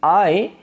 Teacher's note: the lips are open at the beginning and then they spread at the end